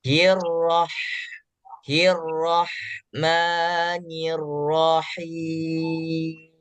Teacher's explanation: huruf ha yang disukunkan Berikan dia Hames dan hamesnya desisnya silakan dibiarkan keluar terlebih dahulu jadi jangan ditahan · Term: hamas